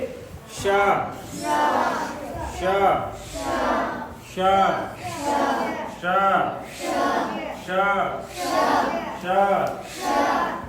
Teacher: ऊपर जीभ तालू के पास जीभ ले जा के बोलिए। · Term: तालवी श